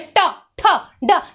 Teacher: जीभ पूरा मुड़ जा रहा है, योगा कर रहा है, इसलिए मूर्धा वर्ण कहते हैं।